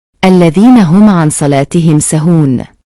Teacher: Cara membacanya dengan jelas di bibir dan mulut tertutup tanpa dipanjangkan. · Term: izhar syafawi